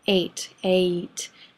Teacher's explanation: has two vowel sounds in a single syllable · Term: diphthong